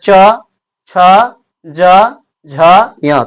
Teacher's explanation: सब का उच्चारण आपको तालु से होता है